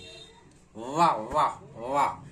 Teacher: कंठोष् अब यह व बचा व ये वगला वाला व जब हम इसका उच्चारण करते हैं तो व नीचे का ओष्ठ ऊपर के दांत दोनों मिलके तो दंतोष्ठ